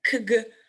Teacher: the obstacle is again complete, and it's made between back part of the tongue and the velar soft palate